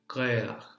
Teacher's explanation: the consonant is a particular guttural sound that impacts the following vowel